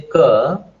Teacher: If you say ka, stoppage will happen at the velar level.